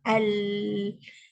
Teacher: Ni ada, kalau kita tengok pandangan ke atas ni, kan, untuk huruf ra, pandangan hadapan bentuk lidah ketika menyebut huruf ra, ini adalah pandangan hadapan bentuk lidah ketika menyebut huruf lam. Jadi dia keluar daripada dalam, dia pergi ke tepi lidah, dua tepi lidah untuk lam.